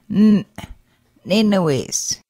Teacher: Glottal N pronounced as an abruptly ended N